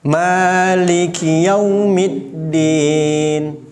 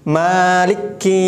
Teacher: huruf Kaf ada tasydidnya tidak tidak ada maka jangan ditahan-tahan